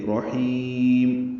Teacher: حا وسط حلق سے ادا کریں گے